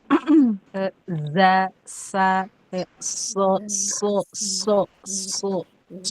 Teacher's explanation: Nah, itu pertemuan dari ujung lidah dengan gigi menimbulkan sis. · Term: sofir